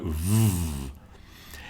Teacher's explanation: But the vote is a fricative, it's called. You put your teeth on your bottom lip and go v. It's related to the F.